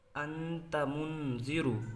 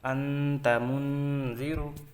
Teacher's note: تنوین یا نون ساکن کے بعد حروف اخفا کے 15 حرفوں میں سے کوئی حرف آئے تو تنوین یا نون ساکن کا اخفاء حقیقی ہوگا، یعنی نون کی آواز کو ناک میں چھپا کر نوک زبان نون ہی کے مخرج میں نہایت ضعف کے ساتھ لگا کر ادا کریں۔ اخفاء کی مقدار 1 الف ہے۔